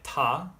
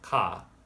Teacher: If you compare how you say ta versus ka, you feel how ta is more in the front of the mouth, where ka is more in the back of the mouth.